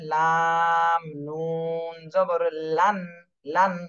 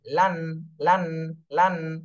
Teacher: নুন এটা জিহ্বার আগা সামনের উপরে তালুর সাথে লাগাতে হবে